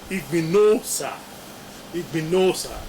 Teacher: That is why the A drops, and then O now comes immediately after the Ni. And so the O is now realized as O, that is nasalized, and you have Igbinosa